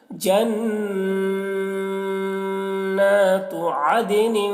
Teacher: نون یہاں پر نون میں غنہ کریں گے، آواز کو گنگنائیں گے ، جنات عدن، ٹھیک ہے، عدن، اب یہاں پر دیکھیے دال